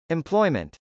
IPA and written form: ɛmplˈɔɪmənt (employment)